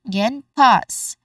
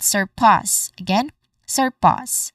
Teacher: pause which is our stressed syllable here. It has a short a sound and then it ends with a hissing sound.